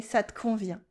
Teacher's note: And in spoken French, remember, we cut the E